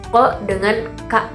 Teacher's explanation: Contohnya itu pada di pangkal lidah itu ada huruf ko dengan ka. Ko dengan ka itu di pangkal lidah ya, di bawah.